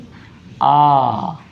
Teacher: विवृत स्वर जिन्हें बोलने में इन सब स्वरों की तुलना में मुंह ज़्यादा खुलता है वो हो जाते हैं विवृत स्वर।